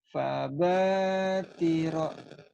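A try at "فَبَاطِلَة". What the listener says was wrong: Ini bukan ro. Huruf apa ini? Lah ya. Fabatila yang ini.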